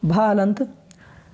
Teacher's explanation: हिंदी की स्पर्श घोष, महाप्राण, ओष्ठ व्यंजन ध्वनि है